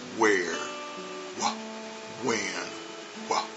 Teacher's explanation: the w h uh sound and the H is really silent the H in those words really does not make a sound